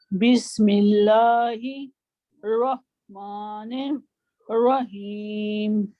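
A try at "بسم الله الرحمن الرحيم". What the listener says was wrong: नहीं, देखिए बी को आप लंबा करें, 20 नहीं, बिस बिस बिस बिस हाँ बिस्मिल्लाह ला ला हिर को भी वाज़े करें। निर्रहीम हाथ अपना मुंह के आगे लाएं और हीम कहें, हीम हीम ठीक है। आपने इस तरह प्रैक्टिस करनी है, ज़बान नहीं आई मीन हाथ आगे लाएं, रहीम ही जोर से करा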